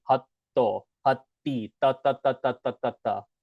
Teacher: I put a capital T in the word hatto and hati. That's because we bite our tongue